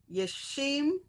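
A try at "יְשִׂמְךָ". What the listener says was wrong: Where's the dot? Left or right? No, left is sin. Sinister. S. Yasim.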